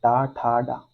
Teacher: मुर्धा से जो होते हैं वो ट वर्ग उत्पन्न होते हैं